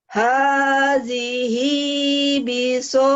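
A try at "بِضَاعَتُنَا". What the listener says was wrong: Bukan bizo, bilzo ya. Hadhihi bidha, ini bulat, bukan bizo. Kalau bizo zo itu. Bidha. Hadhihi bidha'atuna. Atuna. Ain ini. Atuna. Atuna.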